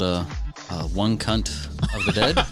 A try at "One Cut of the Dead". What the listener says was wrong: That was, you added an extra letter. One cut of the dead.